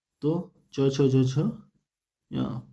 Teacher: तालु और जीभ के स्पर्श से बोले जाने वाले वर्ण